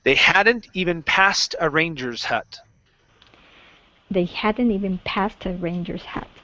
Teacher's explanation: Past and the word hut. So give me that T sound into the A. Connect those sounds.